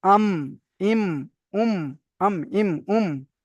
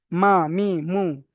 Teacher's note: দুই ঠোঁটের শুকনো অংশ থেকে মিম উচ্চারিত হয় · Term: মিমের মাখরাজ